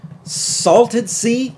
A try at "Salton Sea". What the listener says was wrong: Wait, what? It's not Salted Sea. It's Salton Sea. T-O-N. Salton Sea. No, not Salt and Sea. It's Salton. No, S-A-L-T-O-N. Salton Sea.